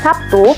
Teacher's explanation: pada kata Sabtu, fonem B diucapkan sebagai P